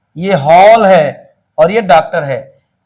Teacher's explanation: इसका जो उच्चारण होता है अ और ओ के बीच की ध्वनियों में होता है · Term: आगत ध्वनि